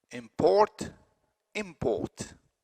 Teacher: the vowel is the same no change in the vowel quality between a verb and a noun